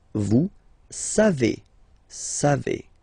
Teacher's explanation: Classic ending for vous, E-Z, but then phonetically it's E.